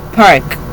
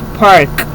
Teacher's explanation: there are three phonemes in British English, park, and four phonemes in American English, park